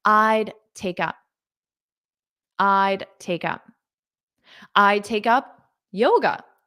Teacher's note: So notice that D is almost not pronounced when you say it in spoken English.